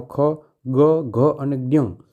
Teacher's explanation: એને કંઠ્ય કહેવાય, કેમ કે આપણા કંઠમાંથી એનો ઉચ્ચાર નીકળે છે